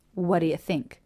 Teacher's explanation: the same position as the T so in this particular case rather than having a stop T go into a d it's even more casual and the t is dropped all together